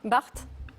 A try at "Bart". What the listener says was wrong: Alors, je pense qu'on ne prononce pas le T. c'est Jean Bart. C'est Jean Bart.